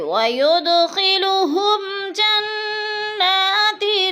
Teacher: میم ساکن کے بعد جیم آ گیا ہے تو ادھر اظہار شفی غنہ نہیں کریں گے ، جیسے وَيُدْخِلُهُمْ جَنَّاتٍ، جن کی نون مشدد ہے، سختی سے